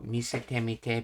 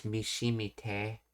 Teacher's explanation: Contraction and concept in casual concise speech, the te plus mi undergoes an assimilation. The te sound in misete assimilates to the palatal shi sound before the I in mite. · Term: palatalization